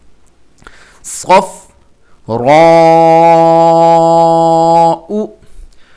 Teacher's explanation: صاد موٹا کریں گے اور دانت ملا کر سیٹی کے ساتھ، اور اس کو فا کے ساتھ ملانا ہے.